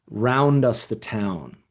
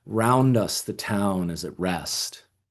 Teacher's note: So stressed, two unstressed units and then another stressed unit and then two unstressed and then stressed.